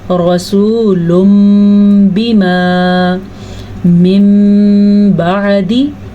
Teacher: یہ رسول بما، اس کے اوپر غنہ بھی ہوتا ہے اور میم پڑھا جاتا ہے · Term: اقلاب